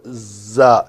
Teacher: زا کے لیے میں نے دونوں دانتوں کو جوڑا اور پیچھے سے زبان ٹکرائی